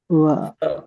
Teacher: So the va sound uses danta and oshta. It's a dantoshtya varna, the front upper teeth and the lower teeth.